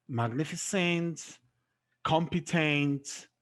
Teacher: The stress is placed on the third syllable from the end.